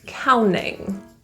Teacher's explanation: The T in counting, because it's after an N and it's not stressed, we often delete that T.